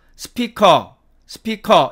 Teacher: 동일한 길이로 짧게 발음을 합니다